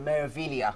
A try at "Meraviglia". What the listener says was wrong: Meraviglia. say the G.